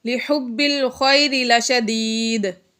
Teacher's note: لِحُبِّ الْخَيْرِ لَشَدِيدٌ، یہاں پر بھی دال حروف قلقلہ میں سے ہے اور یہ ساکن ہو گیا وقف کی وجہ سے، اس لیے یہاں پر ہم نے قلقلہ ظاہر کر کے پڑھا